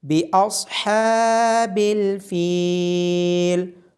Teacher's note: باصحاب الفیل، صاد کو موٹا پڑا جائے گا، ہا کی آواز گلے کے درمیان سے آئے گی، ہا کے اوپر کھڑی زبر ہونے کی وجہ سے ہا کو لمبا کیا جائے گا اور فا کے بعد یا مدہ ہونے کی وجہ سے فا کو لمبا کیا جائے گا